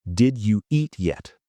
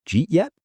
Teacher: The did and you become j.